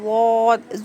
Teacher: Next دیکھیے صاد زبان کا کونی نیچے کے دو دانتوں کے جڑ میں لگانے سے صاد ادا ہوتا ہے. اور ضاد زبان کی کروٹ اوپر کے چار دانتوں کے مسوڑوں میں لگانے سے ضاد ادا ہوتا ہے